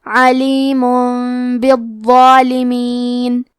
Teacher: کلمت بالظالمین، یہاں بھی حکم ہے قلب، تو ہم یہ حکم کو غنہ کے ساتھ ادا کریں گے · کلمت بالظالمین میں وہ ہے اور وہ کی ادائیگی زبان کے سر اور اوپر والے دانتوں کے اندرونی کناروں سے ہے، وہ حروف تفخیم میں سے ہے، تو ہم یہ حرف کو بھاری آواز میں پڑھیں گے، اور کیونکہ اس پہ تشدید ہے تو ہمیں یہ حرف کو 2 حرف کے برابر بھی پڑھنا ہے۔